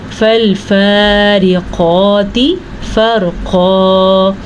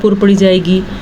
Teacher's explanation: را ساکن ہے اور اس سے پہلے حرف کے اوپر زبر ہے تو یہ را بھی پر پڑھی جائے گی